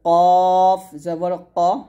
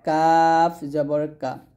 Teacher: এখানে কফটা মোটা হবে, কাফ পাতলা হবে